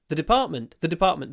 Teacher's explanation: there's no stress on the first syllable